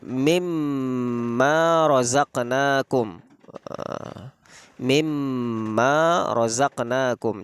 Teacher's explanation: Jadi ditasydidkan, dimasukkan langsung dan mendengung, sehingga huruf nun sukunnya tidak terbaca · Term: Idgham Bighunnah, idgham bi gunnah